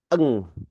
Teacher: ketika huruf kaf ini memang pengucapannya ada di pangkal lidah, maka nanti kita akan mengucapkannya dengan eng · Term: ikhfa